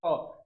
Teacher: ख बोलते समय हमारे गले में कोई क्या बोलते हैं, कंपन उम्पन नहीं हो रहा है। जब बोल रहे हैं तो उसमें क्या हो रहा है, डायरेक्ट आवाज निकल जा रहा है। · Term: अघोष वर्ण